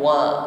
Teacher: huruf wawu dihimpun bibir ke depan wa sehingga tipis bunyi hurufnya